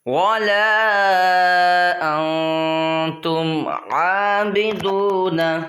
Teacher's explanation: نون ساکن، اس کے بعد حرف اخفا میں سے تا آ رہا ہے، تو یہاں پر بھی اخفا ہوگا